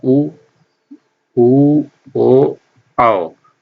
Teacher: इनको बोलने में हमारा जो होठ है, हमारा जो मुख है, तो वो गोल वृत्ताकार हो जाता है, इसलिए इनको वृत्ताकार स्वर कहा जाता है।